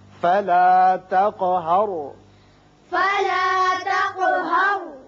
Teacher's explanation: را ساکن ہے، پہلے زبر ہے، را پر ہوگا.